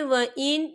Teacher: ये देखिए, व इन, यहाँ नून साकिन है, नून साकिन के बाद जो है खा आ रहा है, और खा जो है हरूफ हल्की का वर्ड है, तो हम यहाँ इजहार करेंगे और हम इसे बिना गुन्ने के पढ़ेंगे।